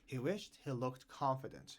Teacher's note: the pronunciation of wish in the past is wished with a T sound because of the sh sound